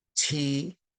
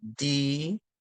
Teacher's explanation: If I'm saying T, it's only because my tongue is in contact or making a connection with the back of my two front teeth to say T or to say D. If you say it to yourself right now, T, and then you say D, you can feel a slight difference in the pronunciation of those words.